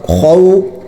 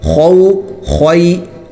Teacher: خو کا جو لفظ ہے وہ موٹا ہوتا ہے اور یہ حلق سے نکلتا ہے، خو نکالنا ہے، اس میں احتیاط کرنی چاہیے کہ کھے کی طرح یہ لفظ نہ نکلے، کھو نہیں ہونا چاہیے بلکہ حلق سے اور موٹا۔